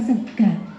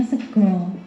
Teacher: yang khas dari bahasa Banyumasan adalah banyak bunyi vokal a terutama di bagian akhir kata sementara di bahasa Jawa baku bunyi A itu berubah menjadi O